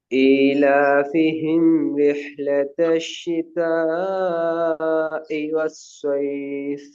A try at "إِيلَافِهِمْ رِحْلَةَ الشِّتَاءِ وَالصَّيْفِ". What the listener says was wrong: இன்னும் தொண்டையிட முன்பகுதிக்கு வரணுமா? இ பிரச்சனையா தான் இருக்கு.